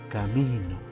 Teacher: tiene la mayor fuerza de voz en la penúltima por ejemplo camino vemos que la mi tiene la mayor fuerza · Vemos que la mi tiene la mayor fuerza de voz y se encuentra en la penúltima sílaba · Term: graves, graves o paroxítonas